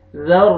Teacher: را کو پر کرنا ہے، را مشدد ہے، ذال کو ملانا ہے را کے ساتھ، اور را کو زبر بھی ہے، را کو موٹا بھی کرنا ہے.